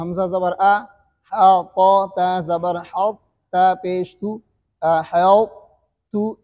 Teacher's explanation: قلقلہ نہیں ہوگا قا کے اوپر، لیکن قا کی موٹی آواز کو باقی رکھیں گے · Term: صفت اطباق